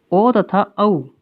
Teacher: ओ तथा औ इन दोनों स्वरों का उच्चारण स्थान कंठोष्ठ यानी कंठ और ओष्ठ होते हैं।